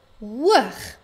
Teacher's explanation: Hoog het 'n lang vokaal klank, die o klankie, en dit eindig op 'n g.